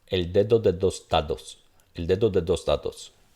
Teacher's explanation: Si yo lo pronuncio todo como oclusivo, noten que sonará extraño.